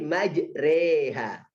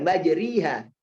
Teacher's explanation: harokat fathah yang cenderung ke kasroh. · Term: imalah